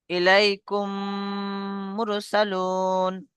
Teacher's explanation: মিম সাকিনের পরে যদি মিম আসে, তাহলে মিমকে মিমের সাথে মিলিয়ে গুণনা সহ পড়তে হয়, একে ইদগামে সাফাবি বলা হয়।